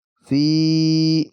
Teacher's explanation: Di sini dilihat ada fa berharokat kasroh, kemudian kemudian ada ya sukun. Fi, kita baca panjang 2 ketukan karena mad tabi'i